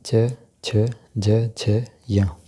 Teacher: च वर्ग, ये तालव्य वर्ग है। इनके उच्चारण में तालु का योग रहता है।